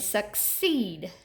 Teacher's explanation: you hear the long E in the second syllable.